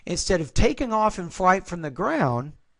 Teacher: I would actually have Rising tone there because this separates the introductory phrase from the main part of the sentence